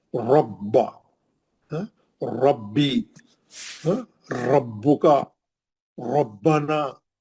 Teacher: जितने रा है रब के जबर ही है उसमें, और रा मोटा पड़ जाना, मुंह भर के पढ़ना रा को